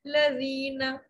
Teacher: دال نرمی سے ادا کریں گے، زبان دانتوں کے سرے سے لگے گی